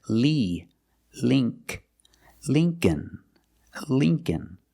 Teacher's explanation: the first syllable is a long e like green beans